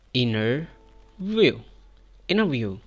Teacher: Skip the T sound and say inner view.